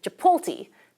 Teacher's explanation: we often metathesize the T and L and say Chipotle, because that TL sequence is rare in English